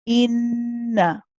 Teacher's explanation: So you prolong the in, but you do not prolong the na that follows. Okay. The na is then joined with the lam in the next word. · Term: Noon Mushaddad